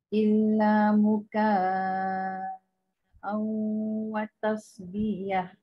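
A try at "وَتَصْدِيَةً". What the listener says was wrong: Pendek watasbiyah. Terpanjang di tu.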